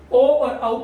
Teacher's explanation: ओ और औ का उच्चारण स्थान होगा कंठोष्ठ